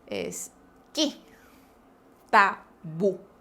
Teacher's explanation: Y vocales cerradas, I, U. Pues bien, estas dos palabras terminan en vocal cerrada, tildada. La mayor fuerza de voz recae en esa vocal, entonces se tilda.